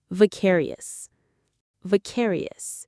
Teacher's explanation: The stress is on that second syllable. Care. Just like precarious, but with a V.